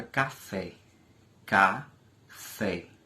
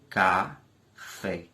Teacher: Por exemplo, a palavra café, café, duas sílabas, café. Observe que fé é uma sílaba forte em relação a cá. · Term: sílaba tônica